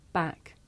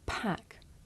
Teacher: with the voiceless sound there's a big puff of air you can feel it with your hands